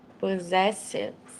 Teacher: the first s's are a z sound and the second s's are an s sound